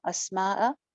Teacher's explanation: सीन की आवाज चल रही है, सीटी भी है।